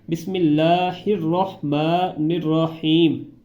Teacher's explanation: یہاں پر پہلے الرحمن میں را کو ہا کے ساتھ ملا کر پڑھنا ہے، اور آگے رحیم میں را کو الگ پڑھنا ہے اور ہا کو الگ پڑھنا ہے